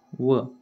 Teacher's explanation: दंत आपले दात आणि ओठ यांचा उपयोग करून जे बनतात त्यांना दंतोष्ठ्य वर्ण असे म्हणतात. त्यामध्ये येते व.